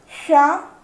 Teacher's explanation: ये है तालव्य शकार, क्योंकि इसका उच्चारण तालु से होता है। जब हम इसको बोलते हैं तो हमारे जीभ का जो अगला भाग होता है वो नीचे वाले दांतों के नीचे को टच करता है और जीभ का बीच वाला भाग ऊपर टच होता है।